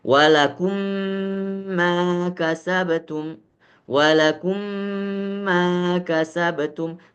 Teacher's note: Mim dengan mim harus dipastikan bibir keduanya itu harus rapat benar. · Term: idgham mimi